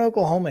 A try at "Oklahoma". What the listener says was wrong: Oklahoma. Yeah, got that extra syllable in there.